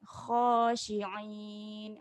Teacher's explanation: jangan lupa untuk pekatkan kha ni